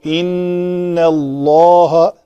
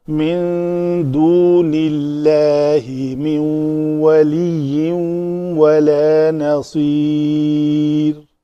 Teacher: یہ لام اس میں جلالہ کا پتلا پڑا جائے گا، اس لیے کہ ماقبل زیر کے ساتھ ہے